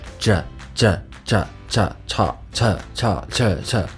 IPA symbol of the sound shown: ʈ⁼